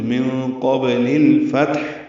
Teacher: ساکن کے بعد قاف آنے کی وجہ سے بھی اخفا ہے، قاف پر ہے، با ساکن پہ قلقلہ ہے